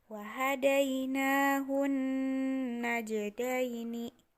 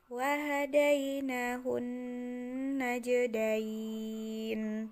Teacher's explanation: Tapi ketika kita akan mewakofkan ayat tersebut atau bacaan tersebut menjadi wahadainahun najdain. Nunnya menjadi nun mati. Sebelum nun ini ada ya mati, maka dibacanya panjang.